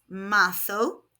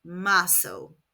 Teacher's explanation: In European Spanish, Z is pronounced th, so this is marzo. In Latin American Spanish, Z is pronounced s, so this would be marzo. I speak European Spanish, so I will be saying marzo.